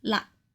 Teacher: you can either use the plosive ‘k’ at the end and make it 嘞 [laak3] instead